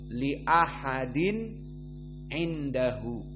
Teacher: tanwinnya dibaca dengan jelas di saat bertemu dengan huruf al-halq. Dan huruf al-halq adalah diantaranya ain. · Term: idhar al-halqi